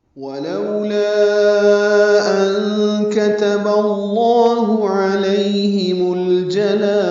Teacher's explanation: واو ہونٹوں کی نا تمام گولائی سے ادا ہوگی جلدی. لو وولین ہیں، ہونٹوں کو پھر گول کریں گے، آگے لیں گے ولو نہیں پڑھیں گے.